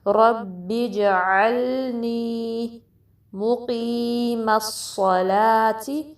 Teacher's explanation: قاف کی کسرہ کے ساتھ یا مدہ پڑھنی ہے جس کو ہم 2 کاؤنٹ سٹریچ کریں گے